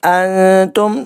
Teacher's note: نون ساکن کے بعد آگے تا ہے، اخفا کا قاعدہ اپلائی ہوگا، 1 الف کے برابر غنہ کرنا ہے